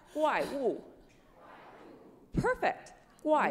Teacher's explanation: these are called falling tones so they go down down